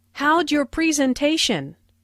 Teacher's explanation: Notice the contraction for “How did” sounds like /howdj/ and “your” sounds like /yer/.